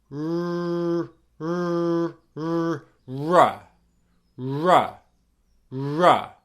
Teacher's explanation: my tongue is bunched up and it's lower down in the mouth. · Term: R sound